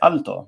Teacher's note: So in Spanish, if you ask someone what's the word for tall in Spanish, they'll say alto, right, with this light L sound, just like in Italian